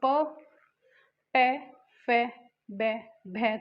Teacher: हमारे ओष्ठ, यानी कि होठों से बोले जाते हैं, इनको कहते हैं ओष्ठ, ओष्ठ्य।